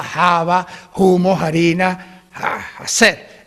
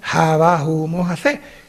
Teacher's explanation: Es decir, lo que en latín era F, como fava, fumo, faquer, diría en latín, ¿no? Pues en castellano se hizo H aspirada